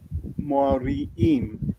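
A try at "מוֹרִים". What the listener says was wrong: Notice that there is no shva under the resh.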